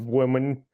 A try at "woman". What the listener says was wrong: You're putting a Y in there.